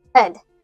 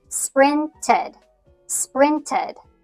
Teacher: You could think of it like a short i sound plus a d or the schwa sound plus d.